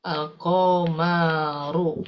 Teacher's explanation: ketika lamnya ini, huruf lamnya ini bertemu ya dengan huruf komariah, maka lamnya dibaca izhar